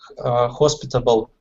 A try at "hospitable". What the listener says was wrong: Maybe with hospitable, instead of having that T, have like a D sound, hospitable. Hospitable? And like I said, we do often change that T sound for a D sound so it sounds like hospitable. You can say hospitable too.